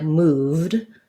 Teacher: the V is voiced. So this sounds like moved. So the ED just says D